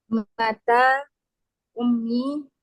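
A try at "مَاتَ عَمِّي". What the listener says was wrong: Bukan Ummi, Ammi itu pamanku.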